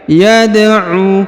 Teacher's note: Huruf Dal berharokat sukun, maka kita pantulkan atau kita qalqalahkan